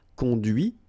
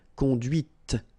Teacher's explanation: And that's when you hear the difference between conduit, because remember, final T is not pronounced, conduit here, and then the feminine, conduite.